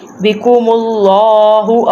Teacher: اب اللہ کے نام سے پہلے پیش ہے تو جہاں پہلے پیش آ جائے ادھر لام کو موٹا کرتے ہیں